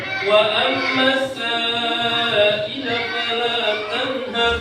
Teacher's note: mim bertasdid harus dibaca gunnah, mendengung